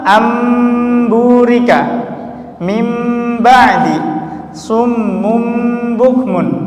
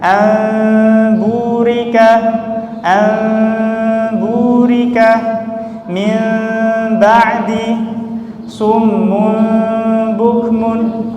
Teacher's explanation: bibir tidak mengatup, namun ada celah kecil atau tipis. Nah, ini disebut dengan furjah.